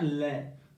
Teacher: जब हम बोलेंगे ना ले तो हमारी जीभ ऊपर उठती है बच्चों, और जो वायु जो है जीभ के बगल से बाहर निकल जाती है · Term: पाशर्विक